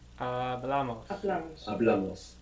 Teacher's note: with amos, we're adding on 2 syllables, and the accent is going on the second last syllable. So it's in a different position, Hablamos.